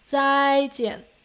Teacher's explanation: when two fourth tone together, the first one can be pronounced as just a high flat tone easily. Okay, because that's easier for humans to pronounce 再见. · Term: two fourth tones